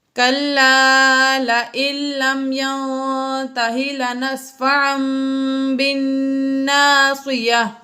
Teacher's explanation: نون ساکن کے بعد تا آ گیا اس لیے یہاں پر غنہ کیا